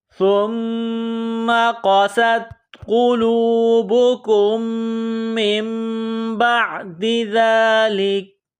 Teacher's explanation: ثم سا کو نرم پڑھیں گے، زبان باہر نکالیں گے سا کو پڑھتے وقت۔ میم مشدد ہے تو یہاں سا کو میم کے ساتھ ملانا ہے، میم میں غنہ کرنا ہے، آواز ناک میں چھپانی ہے۔